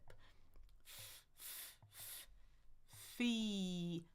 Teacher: that F which is teeth and lip